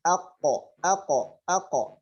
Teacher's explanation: الحنك اللحمي هناك إذا وضعنا أيدينا في الأعلى سنجد أن هناك حنك عظمي، فإذا أدخلنا إلى الداخل قليلا سنجد هناك لحمة. هذا الحنك اللحمي مع أقصى اللسان هو مخرج حرف القاف. مخرج حرف القاف هكذا، أقو.